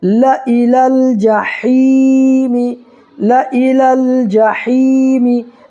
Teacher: ہے، یا ساکن سے پہلے ہا کے نیچے زیر ہے، تو یا ساکن سے پہلے زیر ہو تو یا مدہ ہوگا، اس کو ایک الف برابر کھینچ کر کے پڑھنا ہے